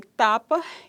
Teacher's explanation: o T oclusiva, alveolar, desvozeada